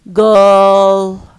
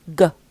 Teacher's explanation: We pronounce it by the back of the tongue touching firmly the soft palate. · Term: velar voiced stop